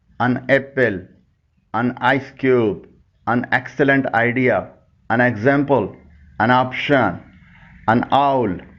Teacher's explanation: این کو ان کہہ کر بولا جاتا ہے، اور کھینچ کر نہیں بلکہ جلدی میں